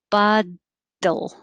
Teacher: So the two T's in bottle sound like a D. It should be a very quick tap.